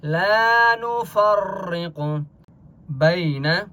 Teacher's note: لا نفرق بین. لا الف مدہ ہے لام کو 1 الف کی مقدار کھینچ کر پڑھیں گے